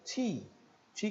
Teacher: nós temos um som de t e um som de i longo I puro longo